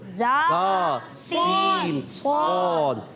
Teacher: حروف اصلیہ اس لیے کہتے ہیں کہ زبان کی بالکل باریک نوک سے ادا ہوتے ہیں، جسے عربی میں کہتے ہیں اصلۃ اللسان. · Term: حروف صفیریہ